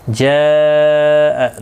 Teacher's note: جاء، دیکھیں یہاں پر بھی حروف مدہ کے بعد جب اصل شکل جو حمزہ کی ہے وہ آ جائے ایک ہی کلمے کے اندر تو مد متصل لگتی ہے، اس کو 4 الف کی مقدار کے برابر کھینچ کر پڑھا جاتا ہے